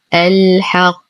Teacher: وقفا على القاف ستصبح ساكنة سكون عارض وبالتالي فيها قلقلة كبرى حال الوقف، وأما وصلا فتحرك القاف بالضم مع التشديد بدون قلقلة.